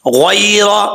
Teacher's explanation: الا ما یتلا علیکم غیر، را کے اوپر زبر را پر پڑھا جائے گا